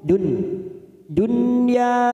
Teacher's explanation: Tid Dunya hayatid Dunya ada nun sukun bertemu ya namanya Idhar wajib kita baca jelas tanpa mendengung Dun dunya ya fathah diikuti Alif dua harakat Dun karena kita